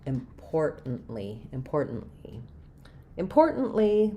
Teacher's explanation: Important. And then I stop that T as well. And I release on the L.